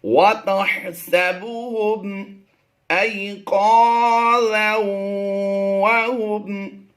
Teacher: تنوین کے بعد حروف یرملون میں سے واو آ گیا، تو یہاں پر ہم نے ادغام مع الغنہ کرتے ہوئے پڑھنا ہے